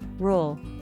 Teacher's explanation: la r que se pronuncia con la lengua que se tuerce hacia atrás